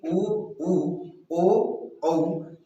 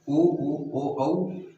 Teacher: आपका ओंठ जो है वृत्तमुखी मतलब गोलाकार रूप में बनते हैं। तो इस तरह हम कह सकते हैं दोस्तों कि ये उ और ऊ, ओ और औ जो है आपका वृत्तमुखी होगा।